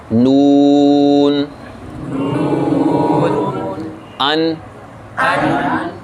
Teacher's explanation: زبان کا سامنے والا گول حصہ جو سامنے والے دانتوں کے مسوڑوں سے لگے گا، تو اس سے ادا ہوتا ہے نون